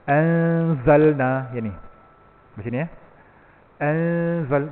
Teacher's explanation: So bunyi itu hujung lidah tu tergantung, maka bunyi dia tak jelas, tersembunyi.